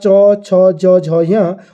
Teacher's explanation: तालू की सहायता से बोले जाते हैं